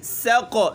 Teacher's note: سین میں سختی ہے، قاف میں قلقلہ ہے